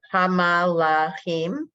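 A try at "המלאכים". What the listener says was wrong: Nope. Hamlachim. The first 2 letters are 1 syllable. The Shabbat is silent.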